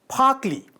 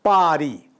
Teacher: li occurs after a voiceless sound, as in phakli, where ka is voiceless, while ri comes after a voice sound, as in pari, where a is voice